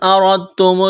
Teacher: را کو موٹا کرنا ہے، را کے اوپر زبر ہے، دال ساکن ہے، اس کے بعد تا ہے، تو یہاں را کو تا کے ساتھ ملانا ہے، اس دال کو نہیں پڑھیں گے۔